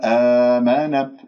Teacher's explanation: كسرة الميم والنون مضمومة أضم الشفاه فيها